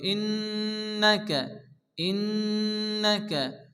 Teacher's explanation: নুনের উপরে তাসদীদ নুন গুন্না ওয়াজিব এক আলিফ গুণা করতে হবে